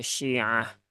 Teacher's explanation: khnya ada Alif maka dibaca panjang Cukup dua harakat